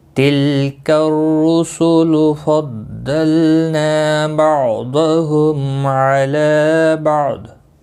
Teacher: را پیش کی وجہ سے پر پڑا جائے گا، باقی کسی بھی حرکت والے حرف کو کھینچنا نہیں، کاف را کے ساتھ ملے گا۔ · ضاد مستعلیہ ہے پر پڑا جائے گا